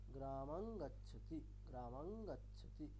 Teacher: For example গ্রামাং গচ্ছতি, এখানে অনুস্বারের পরে কোন বর্গের বর্ণ আছে, গ আছে, গটা কোন বর্গের, ক বর্গের, তাহলে অনুস্বারটি কি হয়ে যাবে, ক বর্গের পঞ্চম বর্ণ ঙকার হয়ে যাবে। তাহলে উচ্চারণটি কেমন হবে, গ্রামাং গচ্ছতি, গ্রামাং গচ্ছতি এরকম।